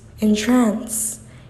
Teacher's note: it could be read with emphasis on second syllable